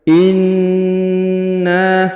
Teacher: Huruf na ditahan dan ditekan karena terdapat tanda tasdid, ditahan kurang lebih 2-3 harokat